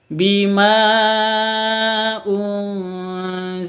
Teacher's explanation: nun mati bertemu dengan Zain atau Za samar didengungkan samar didengungkan dua ketuk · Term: ikhfa Hakiki